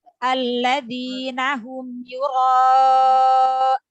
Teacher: Huruf nunnya dialirkan sedikit suaranya karena nun mempunyai sifat tawassut ya, apalagi di akhir ayat ya.